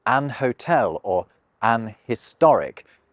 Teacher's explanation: some people still insist on saying “an hotel” or “an historic”, effectively treating the H like it isn’t there. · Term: dropping your H's